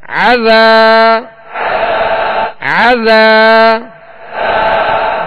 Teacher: یہاں الف مدہ ہے. عذا عین کو درمیان حلق سے ادا کرنا ہے تاکہ حمزہ کی آواز اس میں پیدا نہ ہو